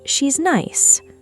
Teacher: spoken with a falling then rising melody trailing upwards slightly at the very end. Every native speaker listening would immediately sense that something is being left unsaid, some mild criticism hovering just behind the words, never directly spoken, but perfectly understood.